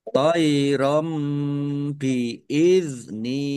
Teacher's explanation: Fathah tanwin bertemu dengan huruf ba. Bacaan iqlab dibaca membalik. Tanwinnya dibaca mim ditandai ada mim kecil berdiri.